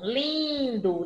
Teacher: Tem a vibração lá no nariz, lá em cima. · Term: som nasal